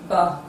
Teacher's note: There is always a total obstruction of air in the oral cavity while producing this sound, thereby causing a vibration in the vocal cord. The sound is produced with the two lips, therefore it is a voiced bilabial plosive sound.